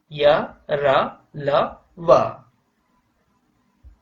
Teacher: उच्चारण के समय जीभ मुख के किसी भाग को स्पर्श नहीं करती। जब आप जिन शब्दों का उच्चारण करेंगे उस समय जीभ जो है मुंह के अंदर किसी भी भाग को टच नहीं करती। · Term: अंतस्थ व्यंजन